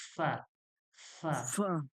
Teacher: উপরের দাঁতের আগা এবং নিচের ঠোঁটের ভিজা অংশ লাগিয়ে বলুন